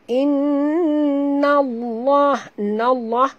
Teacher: Lam pada lafaz jalalah dibaca tebal kerana nun berbaris di atas.